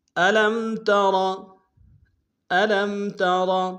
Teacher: الم میں لام کو میم ساکن کے سامنے لانا، میم ساکن میں غنہ کریں گے. ترا میں را کو موٹا ادا کریں گے.